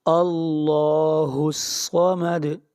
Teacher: دال کے اوپر قلقلہ ہوگا، یعنی آواز کو ہلائیں گے